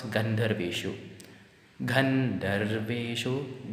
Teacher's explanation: Ga gan is higher pitch. And dhar is lower. So many people do not bring the gan in a higher pitch.